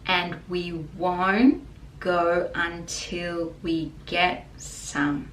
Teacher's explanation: so the D again is silent